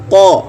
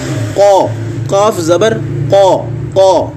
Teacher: आपकी ज़बान की जो जड़ है वो ऊपर की तरफ उठ के तालु का जो नरम हिस्सा है वहाँ पे लग रही होगी